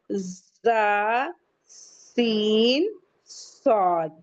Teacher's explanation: جب ان کو ہم بولیں گے تو ہمارے ماؤتھ سے ایک سیٹی کی آواز نکلے گی